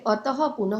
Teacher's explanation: ह का अघोष उच्चारित रूप विसर्ग है